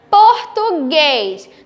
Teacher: Tá vendo que o português, o som, a última sílaba é um som mais fechado?